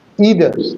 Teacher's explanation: There are two syllables and the stress of the accent is on the first syllable either. So both the pronunciations are accepted either or either one is British accent British pronunciation and the second one is American.